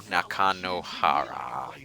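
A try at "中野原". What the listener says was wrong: The emphasis on the wrong syllable.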